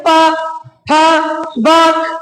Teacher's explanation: ओट जैसे कि प तो प देखो मैं बोलू प तो दोनों होट मेरे आपस में क्लोज होंगे